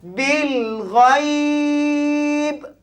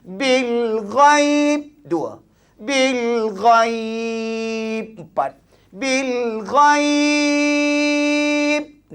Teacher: Ada tiga wajah. Boleh baca dua harakat. Boleh baca empat harakat. Boleh baca enam harakat. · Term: madlin